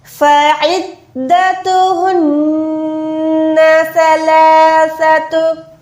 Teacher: सा जो है इसमें विसल साउंड नहीं आती, नरम हुरूफ है। · फ़इद्दतुहुन्ना सलासतु, आइन को दार के साथ मिला के अब आइन को हलक के दरमियान से निकालेंगे। नून मुशद्दद है, इस पे क्या होगा, गुन्ना होगा।